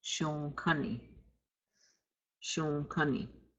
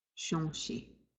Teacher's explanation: You're going to nasalize the O.